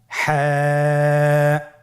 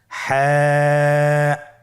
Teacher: হা হরফটি উচ্চারিত হবে কণ্ঠনালীর মধ্যখান হতে। গলা চিপে ধরে আপনি উচ্চারণ করুন।